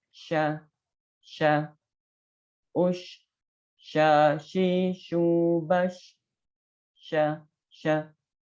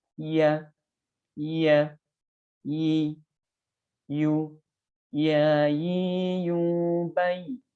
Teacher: Jim, shin, dan ya keluar dari tengah-tengah lidah.